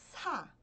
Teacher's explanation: é muito parecido com s mas você precisa soltar o ar